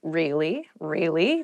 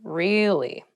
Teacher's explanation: to show you're interested in a conversation with upward intonation really really tell me more or to show that you're not so interested in the conversation with downward intonation